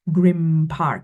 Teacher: You also have grim park, because it's easier to say the m rather than the n. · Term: assimilation